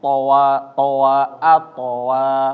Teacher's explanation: jangan sampai terputus. Atowa, jangan ato wa to wa, nyambung terus ya.